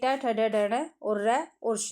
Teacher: मूर्धन्य तालु के मूर्धा भाग से